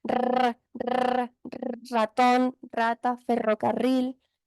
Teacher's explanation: la lengua hace como una especie de espiral sobre el paladar